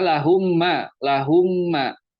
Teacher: mim sukunnya masuk aja langsung mim sukunnya masuk ke huruf keduanya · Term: Kamil